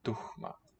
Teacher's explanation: You have that H in what we call a coda, end of a syllable after a vowel.